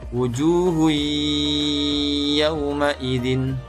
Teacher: bertemu dengan salah satu huruf ya Nun mim atau wow maka dibaca lebur dengan dengung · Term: Idgham Bighunnah